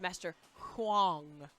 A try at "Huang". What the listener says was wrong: I'm just saying you didn't pronounce the U and the A together.